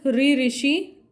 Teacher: मूर्धा से उच्चारण होता है ऋ, ऋषि, ट वर्ग और श